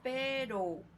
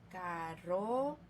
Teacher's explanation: la simple se pronuncia en un solo golpe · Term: vibrante simple